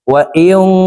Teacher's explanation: এই নুন সাকিনকে নাকের ভিতরে লুকাইয়া গুন্নার সহিত পড়ব